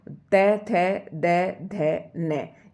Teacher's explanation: ये पांचों जो ध्वनियां हैं इनका उच्चारण दंत से होता है